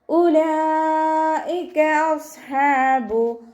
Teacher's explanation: ഉലൈക അസ്ഹാബു സ്വാദ് ഇസ്തിഅലാൻ്റെ ലെറ്ററാണ്, തഫ്ഹീം ചെയ്തിട്ട് ഉച്ചരിക്കുക. ഹ വസത്തുൽ ഹൽക്കിൽ നിന്നാണ് വരുന്നത്, ഹംസയായി പോവാതെ ശ്രദ്ധിക്കുക. അലിഫ് സ്വഗീറ കൂടെ വന്നിട്ടുണ്ട്, 2 കൗണ്ട് നീട്ടിക്കൊടുക്കുക.